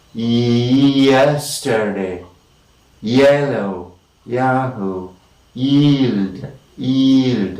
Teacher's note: the approximant or the semivowel here is a glide from E